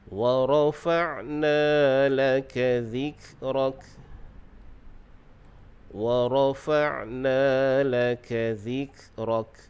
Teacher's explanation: Dalam ayat ini kita fokuskan pada sebutan ain. Ain ini makhrajnya di tengah kerongkong.